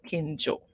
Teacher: Kinjo is a short O. So it's not OU. It's a short O